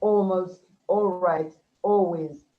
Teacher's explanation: The long vowel, it takes away some of the sound of the L, yes. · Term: dark L